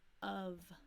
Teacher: of sounds like a short U and a V